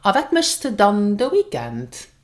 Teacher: Put the stress here on dann.